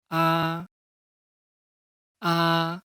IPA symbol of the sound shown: ɑ